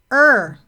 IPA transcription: ɝ